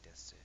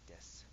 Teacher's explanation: a lot of people don't say desu, they say des with a breath at the end · the su would kind of just be a s with like a breath instead of an actual u sound